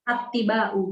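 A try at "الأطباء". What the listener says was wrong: Al-atibba'u. Karena jamaknya kan bukan tok huruf pertamanya, tapi hamzah. Atibba'u. Hamzah itu huruf qamariyah atau syamsiyah? Qamariyah. Maka lamnya harus terbaca jelas.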